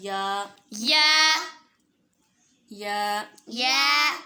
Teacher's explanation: جو جیم اور جو شین اور یا ان تینوں کا مخرج ایک ہی ہے، یعنی زبان کا درمیان اور اوپر والا تالو یہ دونوں آپس میں ملیں گے